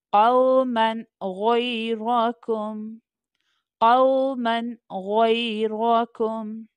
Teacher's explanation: اب یہاں پر میم کے اوپر فتحتین یعنی ڈبل زبر کی تنوین ہے، تنوین کے بعد غین لیٹر ہے جو کہ حلقیہ لیٹر ہے، تھروٹ لیٹر ہے، سو ہمیں یہاں پر اظہار کرنا ہے۔ It means we don't have to do غنہ، ہمیں یہاں پر غنہ کیے بغیر پڑھنا ہے۔